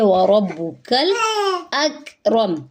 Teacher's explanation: یہ کاف باریک ہے اور کلکلا نہیں کریں گے